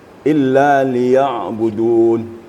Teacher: Ain sukun itu apabila membacanya, yang menonjol di situ adalah sifatnya. Sifatnya adalah tawasud atau bain-bain. Tawasud itu adalah di antara syiddah dan rakhawa.